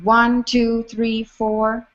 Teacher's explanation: the last line, one, two, three, four for me are four stressed beats